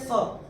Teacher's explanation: अगर विसर्ग के बाद प या फ आता है तो विसर्ग का उच्चारण होता है फ। जैसे फूंक मारते हैं वैसे फ